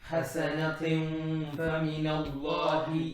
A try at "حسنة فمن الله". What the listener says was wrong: You made it heavy. You said حسنة fa. No. حسنة fa. Flat Ikhfa because fa is flat. حسنة فمن الله.